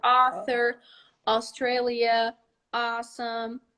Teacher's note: not ow it's not oh completely like our a or okay it's more like a loose ah it's in the middle of ah our a and our o in portuguese okay so you go author australia awesome in the middle there · It's in the middle of a and o, our a and our o in Portuguese.